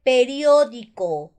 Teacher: mayor fuerza de voz en la ante penúltima sílaba